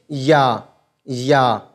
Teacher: या का मखर है जबान का बीच का हिस्सा और उसके मुकाबिल ऊपर का तालू ऐसे हम मिलाएंगे या या बिल्कुल एकदम बिल्कुल एकदम अदा हो